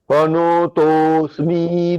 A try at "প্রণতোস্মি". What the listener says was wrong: দুটো জায়গায় ভুল হলো। প্রণতোস্মি মূর্ধন্য নকার বলতে হবে। আপনি প্রণতোস্মি এরকম নো ওকার বললেন, সেটা নয়। প্রণতোস্মি